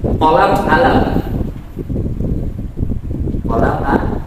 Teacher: Kalau qaf dia ganti menjadi alif orang Mesir.